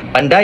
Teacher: pandai dalam BMS menggunakan diftong AI yang memerlukan perubahan dalam posisi mulut dari satu vokal ke vokal lain. Ini menyebabkan sebutan pandai lebih panjang dan kompleks berbanding pandai yang lebih ringkas dan tuntas.